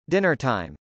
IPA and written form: dˈɪnɚtˌɑɪm (dinnertime)